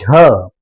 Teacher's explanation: झ बोलने में जीभ जिस स्थान पे ऊपर जाके सटती है उसी को कहते हैं तालु।